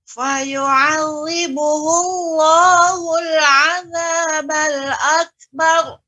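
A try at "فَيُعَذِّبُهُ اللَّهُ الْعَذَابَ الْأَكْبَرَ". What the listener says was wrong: Akbar. Lebih ditambahkan lagi, Ibu, untuk kafnya. Ulang kembali.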